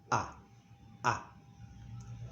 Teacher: it's always pronounced A, A, a very open A